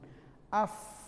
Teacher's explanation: gigi atas bertemu dengan bibir